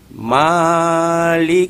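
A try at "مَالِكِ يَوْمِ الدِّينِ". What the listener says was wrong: Nah, jangan terlalu panjang. Jangan terlalu panjang, 2 harakat saja. Maliki 2 harakat, jangan maliki kepanjangan.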